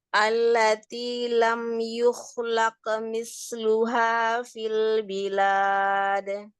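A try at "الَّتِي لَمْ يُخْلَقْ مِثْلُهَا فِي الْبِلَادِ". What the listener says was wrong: Qafnya tebalkan lagi untuk kokolah di huruf qaf. Laqo. Laqo. Laqo. Ya, nanti dilatih ya arah suaranya untuk al-jauhnya.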